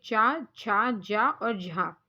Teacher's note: तालव्य व्यंजन वो होते हैं जब आप उस वर्ण का उच्चारण करते हैं तो आपकी जीभ तालू से लगती है तो उसको तालव्य व्यंजन बोलते हैं जैसे कि च छ ज